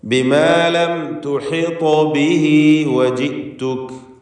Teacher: ഖൽഖല സൂറ നൽകി ത്വാഇൻ്റെ സുക്കൂനിനെ ചലിപ്പിക്കണം. അതോടൊപ്പം ത്വാഇന് തഫ്ഖീമും ഉണ്ട്.